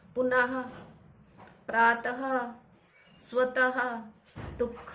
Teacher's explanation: अयोग वहा, यानी जब हम इन वर्ण शब्दों को बोले तो अह की आवाज आए, मतलब लास्ट में ह की आवाज आए